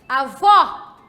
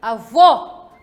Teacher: em que avó, mulher, abrimos a boca. Avô, homem, fazemos o som com a pronúncia fechada, não é? A pronunciação deve ser de forma fechada.